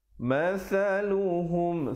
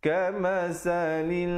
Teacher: Masaluhum, sa di hujung lidah.